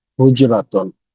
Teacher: সো হা উচ্চারণ হচ্ছে কণ্ঠনালী থেকে